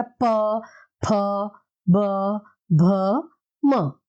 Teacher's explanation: और पांचवा इसका वर्ग रहेगा वो प वर्ग रहेगा, जो हम सिर्फ ओष्ठ यानी होठ से मिलकर बोलेंगे